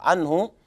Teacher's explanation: عنه الهاء تضم فقط ليس فيها صلة لأحد من القراء إلا ابن كثير المكي، عنه الهاء مظهرة بسبب وجود طبعا قبلها النون مظهرة بسبب وجود الهاء بعدها.